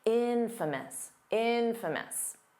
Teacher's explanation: The syllable stress is on the in, so it's not infamous.